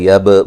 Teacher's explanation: با کو ہلا کے پڑھیں گے، قلقلہ ہے